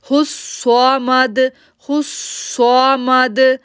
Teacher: صاد کو موٹا پڑھنا ہے، ایک تو یہ موٹا حروف ہے، دوسرا اس کے اوپر تشدید ہے